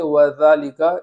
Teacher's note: وَذَالِكَ میں ذال پر کھڑا زبر ہے اس کو بھی الف مدہ کی طرح ایک الف کے برابر تاخیر کر کے پڑھیں گے